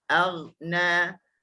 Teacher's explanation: cara kita nak sebut huruf ghin ni, huruf halqi ni dia bukaan dia luas lah. Lebih satu jari, 2 jari tak sampai tapi lebih satu jari lah bukaan.